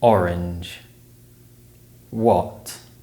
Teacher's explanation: the o sound is similar but the lips are slightly rounded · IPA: /ɒ/